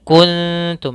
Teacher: Kun cara membacanya samarkan k ta langsung kepada makhraj huruf ta huruf ta makhrajnya kita keluarkan dari ujung lidah ujung lidah bersama ujung lidahnya mengenai gusi atas atau perbatasan antara G gusi atas dengan Gigi · ini ikhfa-nya ikhfa aqrab, yaitu langsung ke ta